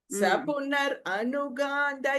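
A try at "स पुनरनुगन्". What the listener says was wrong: Don't say Sapunar Anugan has to come together. You can't say Punar and Anugan. Sapunar Anugan. So make it together.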